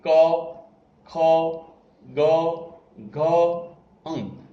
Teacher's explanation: એક જ જગ્યાએ અવાજ નીકળી રહ્યો છે અને એકદમ કંઠમાંથી નીકળી રહ્યો છે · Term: કંઠ્ય